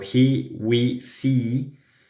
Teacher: tenemos la vocal E tensa en palabras como he, we, see